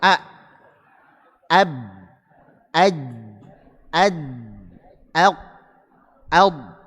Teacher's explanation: ini syiddah ini tertutup dengan rapat sehingga tidak ada aliran suara